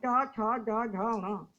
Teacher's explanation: जो बीचों बीच भाग है, ऊपर का जो तालु है जिसको पैलेट कहते हैं, उसका जो मध्यम भाग है, बिल्कुल केंद्र का भाग, उसको हम मूर्धा कहते हैं।